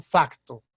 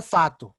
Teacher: porque realmente os brasileiros não pronunciam o C, fato. Mas claro, para os portugueses, escrever fato dá uma confusão com outra palavra, fato, que é traje, ok?